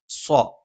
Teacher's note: നാവിന്റെ കൂർത്ത അറ്റത്തിന്െ മുകൾഭാഗം രണ്ടു വരി മുൻപല്ലുകൾക്കിടയിൽ പിന്നിലായിട്ടും നാവിന്റെ മധ്യഭാഗം മുകളിലേക്ക് ഉയർന്നും നിൽക്കും